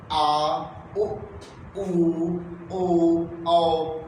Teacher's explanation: ये सभी स्वर जो है जीभ के पिछले हिस्से से बोली जाती है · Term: पश्च स्वर